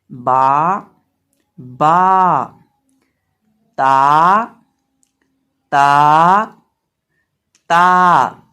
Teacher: जुबान की नोक सामने वाले ऊपर के दो दांतों की जड़ से जब लगती है तो ता अदा होता है। · बा अदा होता है दोनों होंठों को मिलाने से।